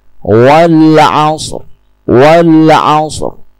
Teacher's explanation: Tunjukkan sedikit getaran pada bunyi ro tanpa menekankan atau mengeraskan bunyi ro tersebut. Cukup dengan menunjukkan getaran wal asr. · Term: ro sukun